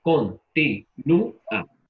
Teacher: En la U. Entonces, la letra que estamos pronunciando con mayor intensidad, que es una vocal débil, es la U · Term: hiato